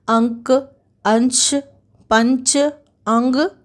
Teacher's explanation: अनुस्वार के उच्चारण में नाक से अधिक सांस निकलती है और मुख से कम। तो ये दोनों के बीच सबसे बड़ा अंतर है।